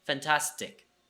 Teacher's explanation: So the T at the end does not have an aspiration. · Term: T without an aspiration